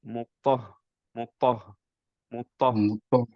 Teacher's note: হায়ের একটা প্রপার্টি ছিল যে সুকুনের ক্ষেত্রে আমাদের হামস করতে হয়, রাইট? সো একটু বাতাস বেরোতে হবে। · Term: হা সুকুনে